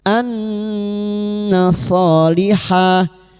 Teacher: nun yang bertasdid gunna musyaddada kita dengungkan selama 3 harakat